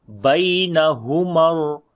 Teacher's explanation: So we read in soft sound. Ha we read from the bottom of the throat. Mim we connect with the ra with the strong voice.